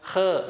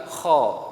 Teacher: Jadi sama, dua-duanya huruf yang isti'la. Jadi pangkal lidahnya diangkat sehingga seakan-akan hurufnya tebal memenuhi rongga dari mulut. Jadi bukan saya mengatakan khe, bukan, tapi kho.